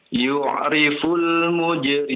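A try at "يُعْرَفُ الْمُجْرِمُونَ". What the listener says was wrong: nah coba perhatikan harokatnya, coba lihat. Di atas bukan di bawah ya.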